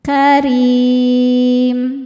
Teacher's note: Berikutnya ada ikhfa hakiki ab'ad karena tanwin dhammah menghadapi huruf kaf. Cara bacanya tanwin disamarkan ke kaf disertai dengung, dengungnya banyak.